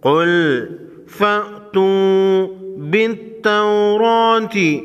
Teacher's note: وقف کی صورت میں گولتا کو ہا پڑھیں گے۔